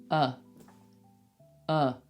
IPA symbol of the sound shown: ə